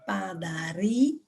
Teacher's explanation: Padaria, sílaba tônica, padaria, é o ri, portanto ela é paroxítono.